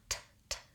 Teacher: It's a stop sound. The air releases and it's one sound. But if I could hold it, tss, all I would do would be make the T sound and then keep the air moving.